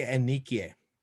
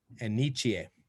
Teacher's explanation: With ni, when it comes before a K, we don't like that K in there.